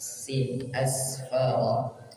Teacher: Sifat as-safir. Ada sifat as-safir, artinya berdesis.